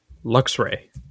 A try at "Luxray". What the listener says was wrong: Yeah, you're adding an extra syllable in there.